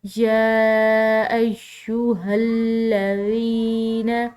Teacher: ذال نرم حروف میں سے ہے، اس کو ادا کرتے ہوئے سیٹی کی آواز نہیں آنی چاہیے